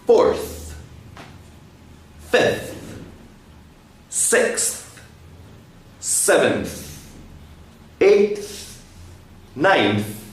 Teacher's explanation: when i make the sound my tongue comes between my teeth